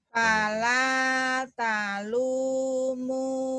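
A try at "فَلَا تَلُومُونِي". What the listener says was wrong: Bukan ala tapi fala ya. Fala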